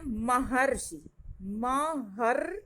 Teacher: तो देखते हैं महर्षि, महर्षि, यहाँ र को हम घुमा के बोल रहे हैं, तो जहां र को घुमा के बोलते हैं जीभ हमारी घूम जाती है, उसका मतलब है कि वो र जो है स्वर रहित है, यानी इसमें से स्वर का लोप हुआ है।